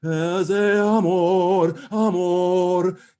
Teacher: careful not to then double the M on amor